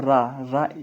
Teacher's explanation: इनके उच्चारण में जीवा का अग्र भाग लुड़खुड़ाकर वर्तस को स्पर्श करता है। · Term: लुंठित व्यंजन